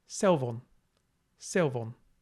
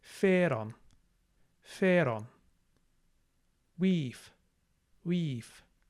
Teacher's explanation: Between vowels, we have a sound like V, like modern English V.